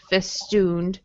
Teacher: This ooh sound here does not have any kind of yeah in it, just festooned.